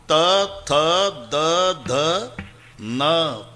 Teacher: आहे जेव्हा संबंध दाताशी येतो ते दंते आहे तथ दध न किती ताकद लावून धक्का मारते जीभ आतून दाताला